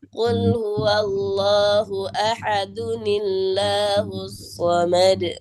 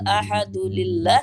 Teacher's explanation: Tambahin nun kasroh, ya